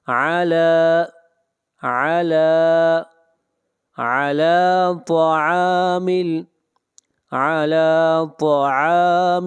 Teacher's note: طا کو موٹا پڑھیں گے، طا حروف مستعلیہ میں سے ہے